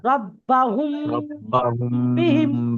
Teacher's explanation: রব্বাহুম রব্বাহুম বিহিম, এখানে বিহিম গুণনা হবে, এখানে একালি পরিমাণ গুণনা করবেন, রব্বাহুম বিহিম, হামিম পেশ হুমটা গুণনা হবে, এই মিম সাকিনকে গুণনা করে পড়তে হবে